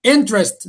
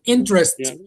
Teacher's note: The stress lies on the first syllable.